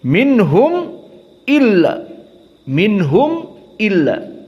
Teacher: dibaca dalam keadaan idhar, tidak ada panjang sama sekali